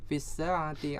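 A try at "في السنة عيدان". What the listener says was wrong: Fis sanati, ya, bukan saati. As-sanah.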